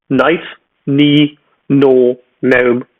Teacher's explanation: without the k or g sound in the beginning